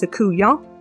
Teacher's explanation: You'll also notice I'm taking the T sound off the end.